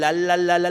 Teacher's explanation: si yo agarro la lengua y la pego de los dientes, digo la, es la misma A, pero digo la, digan la.